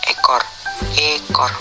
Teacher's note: Vokal E. Kriteria: vokal depan, sedang atas, tak bundar, semi tertutup